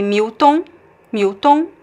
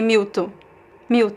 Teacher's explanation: a variation of accent in Brazil that people just drop the N the nasal sound and just say mw mu.